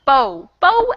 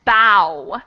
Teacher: the vowel sound changes in the first one it's o and the second one it's ow